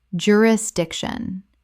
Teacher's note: Four syllables with the stress on the third.